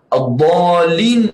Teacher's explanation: harus kita pastikan mad itu cukup 6 harakat dan dhalnya tebal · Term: mad lazim kalim muthaqal